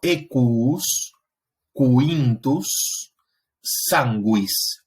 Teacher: un sonido que desarrolla lo que se conoce como un apéndice labiovelar, y es lo que transcribimos como una W, y corresponde a ese sonido U.